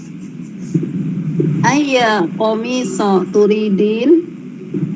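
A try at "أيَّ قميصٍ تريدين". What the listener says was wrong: Ayya qamisin. Qamisin tanwin ya. Ayya qamisin turidin.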